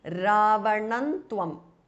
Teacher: So the next word is tvam, so it starts with th. So the anuswara changes to n, which is the anunasika or the nasal of the ta varga. So it becomes Ravanantvam.